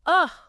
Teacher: that super relaxed neutral vowel sound like the a in about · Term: schwa